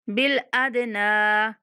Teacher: दाल पर कलकला करना है और नून को खींच के पढ़ना है।